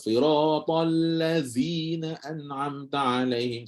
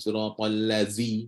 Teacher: tebal lazi allazzi sedangkan di situ bukan Zai tapi huruf Zal bahkan huruf Zal ni kira betul-betul hujung lidah sentuh memang ringanzi allzi sampai tak ada getaran tak ada tak ada